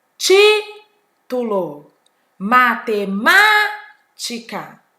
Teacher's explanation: proparoxítona a sílaba tônica na antepenúltima sílaba